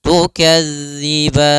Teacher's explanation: sempurnakan daripada makhraj huruf dzal, jangan sampai terbaca dengan huruf zai